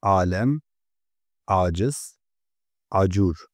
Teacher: alem, aciz, acur kelimelerinde A harfi Arapçadaki ayn sesine benzer ağır bir A sesi olarak çıkar. Kısacası bazen A düz, bazen de boğazdan gelen farklı bir A sesi olarak telaffuz edilir.